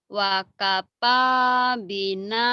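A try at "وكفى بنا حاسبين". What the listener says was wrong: wakafa jangan wakapa ya orang Sunda nih mau wakapa wakapa baik.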